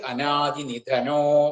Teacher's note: ശ്ലോകമായിട്ട് വരുമ്പോൾ അനാദിനിധന എന്നുള്ള വിസർഗം ഓ എന്നായിട്ട് അനാദിനിധനോ എന്ന് വരും